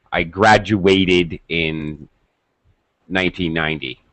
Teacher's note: When we use the ATE ending word as a verb, then we fully pronounce it, and it is stressed.